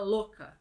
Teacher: a gente suprime esse U na pronúncia verbal, assim, na verbalização.